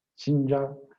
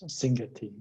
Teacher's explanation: There's a set of about 7 or 8 words that end in the syllable ja, and when they get a possessive suffix, they lose their whole syllable, ja.